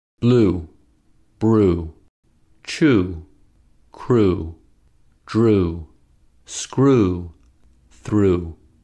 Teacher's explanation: to make ooh we make the lips tense so that the lips are rounded and protruding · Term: ooh sound